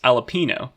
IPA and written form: ɑː.lə.piː.noʊ̯ (jalapeño)